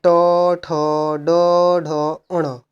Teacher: मूर्धा से, मूर्धन्य से। और ट वर्ग, ट वर्ग किस में आता है? मूर्धन्य में।